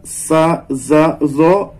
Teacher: nampaknya yang bertemunya itu sama, yaitu ujung lidah dengan gigi atas